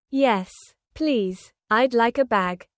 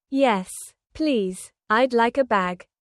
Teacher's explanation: Emphasizing the please for added politeness.